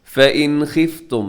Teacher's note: فَإِنْ خِفْتُمْ، نون ساکن کے بعد خا، یہاں حروف حلقی میں سے ہے خا، تو آپ یہاں پہ اظہار کریں گے، مطلب نون ساکن پہ غنہ یا اخفا نہیں ہوگا